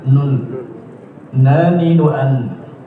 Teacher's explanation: Ujung lidah menempel di gusi di bawah lam itu nun, berkombinasi dengan rongga hidung.